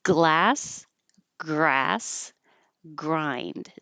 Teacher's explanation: you can make the G in the back with the back of your tongue touching the roof of your mouth at the same time you're making the L so it's really like this the front is making the L · same time you're making the L so it's really like this the front is making the L while the back is going g g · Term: GL combination